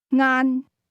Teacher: The word lunch is pronounced with a mid-level tone.